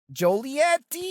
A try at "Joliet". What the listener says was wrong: You said it like toilet.